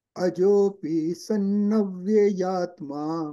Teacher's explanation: Vya and ya both should be heard separately.